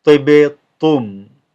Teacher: Okay, ba is a qalqala. We're making an echo there.